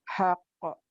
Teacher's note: Kol-kolah kubro yang besar karena bertasdid